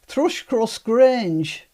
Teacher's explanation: In Yorkshire, remember, all the vowels are down.